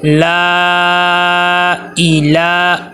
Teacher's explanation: مد منفصل آ گئی ہے، 2 سے 3 الف کے برابر اس کو لمبا کرنا ہے، حروف مدہ کے بعد حمزہ دوسرے لفظ میں لا الہ ای حمزہ زیر ای، اے کی آواز نہ آئے ای کی آواز آئے، لا الہ الا ہو الحی یا کے اوپر تشدید ہے اور یا کو سختی کے ساتھ رک کے پڑھنا ہے۔